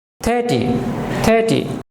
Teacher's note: না আমরা বলবো 30 একটু এ হয়ে যাবে সাউন্ডটা 30 30 আর এর পরে লক্ষ্য করুন কনসোনেন্ট আছে টি কাজেই আমরা আরটাকে উচ্চারণ করব না